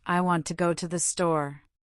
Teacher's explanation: The stressed words are want, go and store. The other words I, to are much softer and quicker.